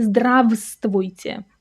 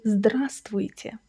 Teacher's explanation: That в in the middle is silent. · That V in the middle is silent. You don't say здравствуйте, you say здравствуйте.